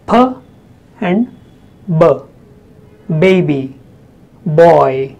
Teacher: P and B, they both are bilabial sounds. That means both your lips take part in the production of sounds.